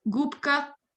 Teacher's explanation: So you'll notice the B in the first one, gubka, because this k is after it, and that is unvoiced. The B that's normally voiced becomes unvoiced, and the B, the B, is pronounced as its unvoiced counterpart, p, p.